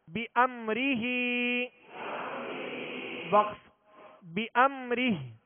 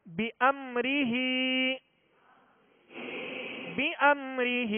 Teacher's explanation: میم ساکن کے بعد حرف را ہے، قاعدہ کون سا لگے گا؟ اظہار شفوی، غنہ نہیں کریں گے